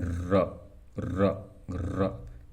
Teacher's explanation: और र में र देखिए जीवा प्रकंपित हो रही है, इसलिए इसको प्रकंपित और लुंठित कहा जाता है